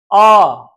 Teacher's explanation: बोल रहे हैं आ तो पूरा मुख खुल रहा है और एक गोलाकार में आ तो इस वर्ण को हम विवृत स्वर नाम देते हैं। · पूरा खुला रहता है और जीभ नीचे की ओर रहती है। ऐसे को हम विवृत स्वर कहते हैं।